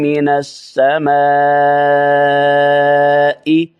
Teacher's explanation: سما کی الف کو لانگ کرنا ہے، لمبا کرنا ہے کیونکہ مد متصل ہے، 4 الف جتنے اس کو لمبا کر سکتے ہیں۔